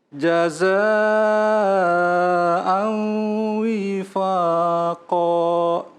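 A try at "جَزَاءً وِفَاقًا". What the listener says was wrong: Cuman ada beberapa yang agak belum stabil ya. Jaza'an wifaqa. Tadi jaza'an wifaqa. W-nya tidak panjang harusnya.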